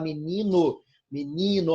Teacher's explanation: a força não recai no final, recai na penúltima sílaba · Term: paroxítona